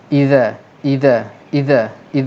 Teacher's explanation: kita sebut dengan mengeluarkan sedikit hujung lidah kita keluar antara Gigi atas dan Gigi bawah